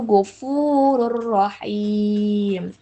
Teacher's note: Huruf ro kan ini termasuk huruf dari idgam bila gunna. Jadi dibacanya tanpa dengung alias melebur ke huruf selanjutnya